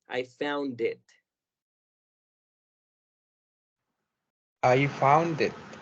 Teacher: I found, y no escuché el sonido de la D, que en este caso en específico es muy importante. Vamos a marcarlo más como D.